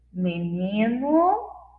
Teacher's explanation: a sílaba final tem o som de U. Fraco. Então, nós escrevemos com a letra O.